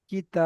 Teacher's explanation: আলিফ মাদ্দাকে একালি পরিমাণ টান দিয়ে পড়তে হয়